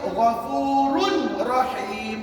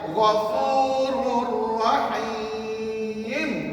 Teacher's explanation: Maknanya tanwin kamu jangan bunyikan langsung ya. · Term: idgham bila guna